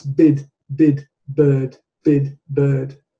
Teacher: The R merely changes the quality of the vowel before it. For example, if you remove the R, that's bid, bid, bird, bid, bird.